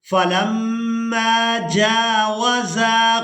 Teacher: زا کو الف مدہ کی وجہ سے کھینچ کر ادا کریں گے